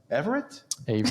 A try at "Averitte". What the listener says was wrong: Averitte. It's a hard A. Yeah, Averitte.